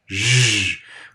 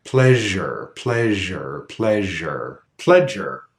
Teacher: the sibilant sound Shh where the sound will be smooth there's not a hard beginning to it